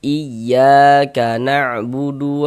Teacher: Naber itu tekanan pada huruf-huruf tertentu sehingga intonasi suaranya itu sedikit lebih tinggi daripada huruf-huruf di sampingnya, ditekan